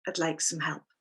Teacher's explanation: when we say, I'd like some help, we pronounce some very softly.